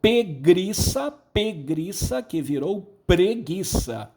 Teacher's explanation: Veja, pegriça, aquele ire simplesmente deslocou-se. Ele estava na segunda sílaba, foi para a primeira, tá? Houve aqui uma metátese.